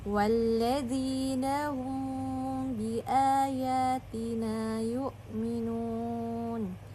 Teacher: Di sini mim sukun bertemu dengan huruf ba, maka dia dibaca dengan samar ee dan ditahan sepanjang dua harakat. · Nah, bisa kita lihat pada ayat 156, walladzina hum biayatina yu'minun. Di sini mim sukun bertemu dengan huruf ba, maka dia dibaca dengan samar dan ditahan sepanjang 2 harokat, dan ini adalah contoh dari ikhfa syafawi karena dia disamarkan cara membacanya.